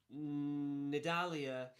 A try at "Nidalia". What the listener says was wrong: Is that how it's pronounced? You pronounced with a really long N the start. Nidalia. You said it wrong. It's too long.